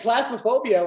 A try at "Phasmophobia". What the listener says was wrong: Phasmophobia, not plasma, but phasma. No, Phasma.